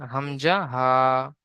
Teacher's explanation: হলকের বা কণ্ঠনালীর শুরু হতে উচ্চারিত হয় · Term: 1 নম্বর মাখরাজ